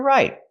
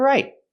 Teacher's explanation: We hear the T in right as a stop T.